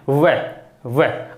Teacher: होठ आपस में टकराने की कोशिश करते हैं लेकिन टकराते नहीं है, कहने का मतलब स्पर्श नहीं करते हैं।